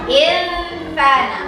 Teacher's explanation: ternyata membacanya samar dan mendengung. Disebut dengan ikhfa.